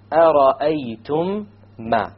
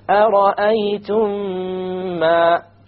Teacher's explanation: You have once again the meme sakin followed by a meme. You merge it together and you have a ghunna. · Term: idgham shafawi